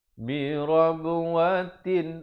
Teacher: Tanwin bila bertemu hamzah izhar halqi, jangan dipanjangkan, sempurnakan saja bunyi tanwinnya.